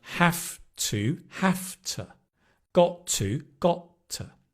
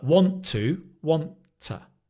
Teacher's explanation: it's the weak form t because the next word is stressed